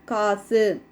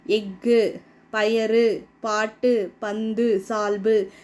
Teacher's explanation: 6 வல்லின உகரங்களும் சொல்லோட இறுதியில் வரும்போது ஒரு மாத்திரைக்கு பதிலாக அரை மாத்திரை அளவு தான் ஒலிக்கும். இவ்வாறு தனக்குரிய ஓசையில் குறைந்து ஒலிக்கும் உகரம் வந்து குற்றியல் உகரம் அப்படின்னு சொல்கிறாங்க. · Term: குற்றியலுகரம்